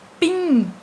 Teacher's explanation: O guim é a sílaba mais forte, então ela é a sílaba que está em última posição. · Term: oxítona